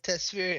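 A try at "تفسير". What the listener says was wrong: Tafsir, my it's called it's called tafsir, not tasfir. No, you said tafsir, tasfir.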